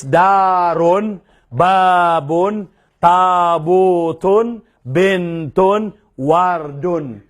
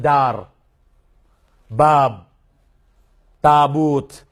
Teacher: Pero ginawa kong silent yung mga last na vowel dito. Kasi sa Arabic, pag magsasalita ka, ganun lang.